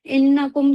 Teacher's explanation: नून के ऊपर तशदीद आ रही है, यहाँ पे गुन्ना करना है